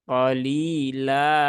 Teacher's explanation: kalau waakaf pada qolilan dia berubah menjadi mad Ya Mad panjangnya dua harakat